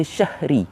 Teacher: Tetapi ada sebahagian yang membaca syahri. Dia ada tambah ha kat situ.